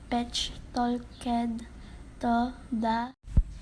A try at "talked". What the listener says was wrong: Talk is mispronounced as talked.